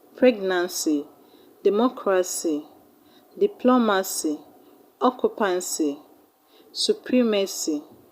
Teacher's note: they should be stressed on the third syllable from the end of the word